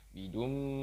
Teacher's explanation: Selanjutnya bidum, ini kita gunakan, kita dengungkan, kita tahan 1,5 alif atau 3 harokat atau 3 ketukan